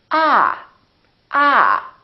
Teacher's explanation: your tongue touch your bottom teeth like this ah ah and this vowel is usually longer than most people who are non-native speakers tend to make it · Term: ah sound